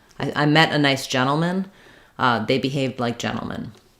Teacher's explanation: we end up with a reduced vowel in that final syllable